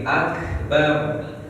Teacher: hamas itu mengalirkan nafas, makanya dia bunyinya akbar